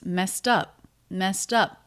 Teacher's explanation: lips come together they make this stop of that stop consonant but they don't release with a puff of air